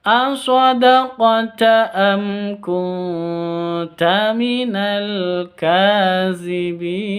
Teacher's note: Cara bacanya jelas, terang, izhar safawi. Kunta nun mati bertemu dengan ta, samar didengungkan, siap-siap ke huruf ta-nya karena ikhfa hakiki.